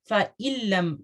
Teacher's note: ادغام ہے لیکن بلا غنہ